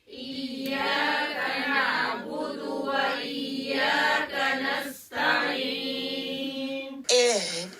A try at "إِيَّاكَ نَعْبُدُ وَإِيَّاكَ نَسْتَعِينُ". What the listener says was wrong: لمبا نہیں کرنا.